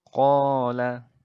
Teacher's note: sebab yang dapat mengubah keasliannya seperti itu jadi Mad asli atau Mad Thobi'i ini itu membacanya adalah dengan cara dipanjangkan sepanjang dua harokat dua harokat itu ibaratkan nyanyi itu dua ketukan seperti itu Tok